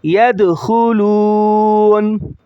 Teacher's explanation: یا دال زبر ید، خا پیش خو، ید خو، لام واو پیش لو، ید خلو، نون زبر نا، ید خلون، وقفاً ید خلون، ید خلون۔ اسٹاپ کی حالت میں نون کی زبر کو ظاہر نہیں کریں گے، اور اسی طرح خا کو موٹا پڑھیں گے کیونکہ ہرا ہے، ہرے لفظ موٹے پڑھے جاتے ہیں۔